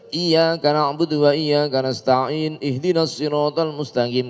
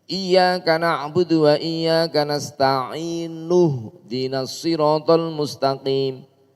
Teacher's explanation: Tidak boleh iyyaka na'budu wa iyyaka nasta'in ihdinas siratal mustaqim, enggak boleh. Harus hamzah wasalnya hilang. Iyyaka na'budu wa iyyaka nasta'in nuhdinas siratal mustaqim.